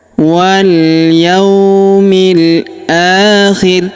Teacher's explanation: huruf ri kita sukunkan atau kita matikan karena di sini terdapat tanda berhenti atau tanda waqaf, yaitu waqaf qola ya.